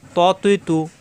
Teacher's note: ত, ত মোটা হবে। ত, জিব্বার আগা উপরে দুই দাঁতের গোড়ায় লাগবে কিন্তু মোটা হবে। ত জবর আসলে ত, আকার প্রকাশ পাবে না, তা হবে না।